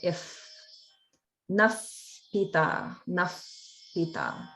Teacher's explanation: There's a visarga in front of a pa. So when visarga comes in front of a pa or pa sound, it actually gets pronounced like an if sound.